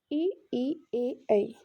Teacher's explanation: अग्र स्वर इसमें हमारा जीभ का आगे वाला भाग या आगे वाला हिस्सा काम करता है